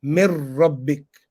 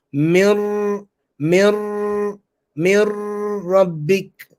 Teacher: So hold the tongue in the makhraj of ra and nasalize it. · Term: idgham with gunna